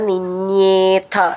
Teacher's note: നിന്യേന്ന് നീട്ടിയിട്ട് ഥ എന്ന് പറഞ്ഞാൽ മതി. ഥ എന്നുള്ള അക്ഷരം നന്നായിട്ട് ഊന്നി പറയണം.